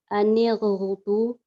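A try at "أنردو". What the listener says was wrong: Oh, good.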